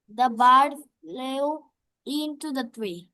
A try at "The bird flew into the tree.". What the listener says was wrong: আরেকটু উচ্চারণ একটু সফট হতে হবে, তুমি একটু বেশি মানে মোড়া মোড়া উচ্চারণ হয়ে গেছে, ঠিক আছে? মানে একটু একটু পশনেস আনো, বুঝছো?